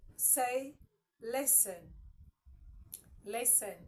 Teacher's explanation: The T there is silent, all right?